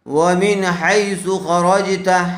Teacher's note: نون ساكن کے بعد حروف حلقی میں سے ہا آیا ہوا ہے اس لیے من کو بغیر غنے کے جلد اظہار کر کے پڑھیں گے